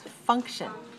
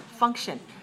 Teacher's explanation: two syllables and stress the first one